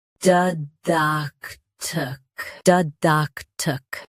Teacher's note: Both US and UK have the same pronunciation of this word. Stress duck. Keep d soft and end with tic.